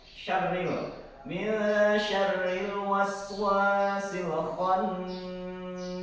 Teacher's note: Kemudian syarril tadi benar itu adalah ro-nya ro tarkik jadi ditipiskan ril.